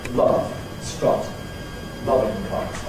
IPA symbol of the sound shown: ʌ